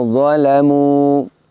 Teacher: setelah mim dhammah kita dapati wawu sukun. Maka dhammahnya dibaca panjang. Alifnya adalah alif syadah. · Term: isbat